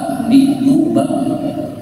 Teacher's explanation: huruf B Itu keluar pada dua bibir